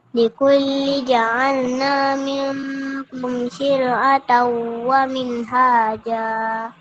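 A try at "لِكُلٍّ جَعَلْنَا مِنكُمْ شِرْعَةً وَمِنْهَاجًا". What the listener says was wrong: Yang ni ada tanwin eh likullin jaalna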